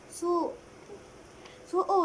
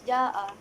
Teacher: Kadar harakat bacaannya adalah 4 atau 5 harakat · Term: mat wajib mutasil